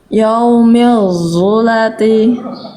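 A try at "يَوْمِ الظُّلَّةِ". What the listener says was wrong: Ya udah lebih bagus vo-nya, tapi lamnya tasydidkan juga, bukan zulati tapi zulati. Yaumil zulati. Zulati.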